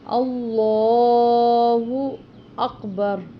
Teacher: اس کی وجہ یہ ہے کہ اس لام سے پہلے حمزہ پر یعنی کہ الف یا حمزہ پر زبر ہے، اس لیے اس لام کو موٹا پڑھیں گے، پر پڑھیں گے، اور لام کے اوپر کھڑی زبر ہے، اس وجہ سے اس کو لمبا بھی کر کے پڑھیں گے